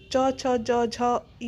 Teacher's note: तालव्य यानी तालू से बोला जाता है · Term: तालव्य व्यंजन